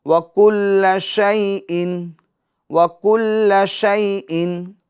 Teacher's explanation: شی جھٹکا بھی نہیں دیں گے اور شیئن کھینچے گی بھی نہیں، ٹھیک ہے، اور معروف طریقے سے پڑھیں گے.